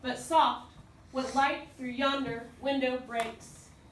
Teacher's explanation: so it's unstressed stressed unstressed stressed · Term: iambic